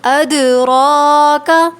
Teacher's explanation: را کے اوپر کھڑا زبر ہے اس لیے اس کو موٹا پڑھنا ہے